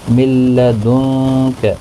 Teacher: نون ساکن کے بعد حروف اقفا کا کاف ہے، اقفا حقیقی ہوگا، گنہ کے ساتھ پڑھیں گے